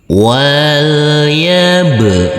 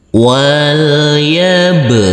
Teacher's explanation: huruf ba sukun ini adalah bacaan qqalah maka harus wajib dipantulkan